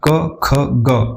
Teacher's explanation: पहले वर्ग का उच्चारण कंठ से होता है